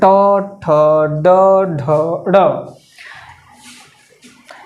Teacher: मूर्धा से जो आवाज़ आता है, मूर्धा मीन्स जब जिह्वा क्या करता है आगे निकल करके और उसका जो अग्रभाग है वो मुड़ जाता है। तो जिह्वा जब आगे निकल करके उसका अग्रभाग मुड़ जाता है तो उसको हम लोग बोलते हैं मूर्धन्य